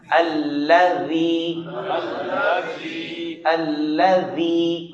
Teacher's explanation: ذال کو نرم ادا کرنا ہے، زبان کا کنارہ سامنے کے دانتوں کے کنارے کے ساتھ لگائیں